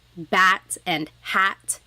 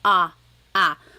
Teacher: So the letter A is more like an ah sound, ah, ah. And sometimes in English, the letter A is very short, like bat and hat. We don't want it flat like that. We want it more open, so ah, ah.